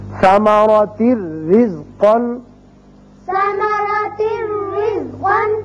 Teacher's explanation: اسی طرح را تنوین کی وجہ سے ایک زیر پڑی جائے گی اور صرف را ہوگا، یا نون کی آواز نہیں آئے گی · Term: ادغام بغیر غنہ